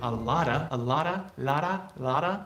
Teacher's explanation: t between vowels sounds like spanish r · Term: flap